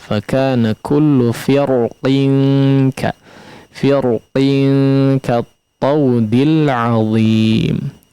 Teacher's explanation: Adapun jalur yang kita bahas ya, yaitu di jalur fil, maka dia hanya bisa dibaca dengan tebal ya pada huruf ra-nya.